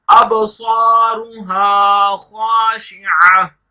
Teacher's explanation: अबसारुहा खाशिआ, अलिफ जहां पर जबर आती है उस हरफ को लंबा नहीं करेंगे, लेकिन जहां पर अलिफ खाली आता है इसको अलिफ मद्दा बोलते हैं, इसको एक अलिफ के बराबर लंबा करेंगे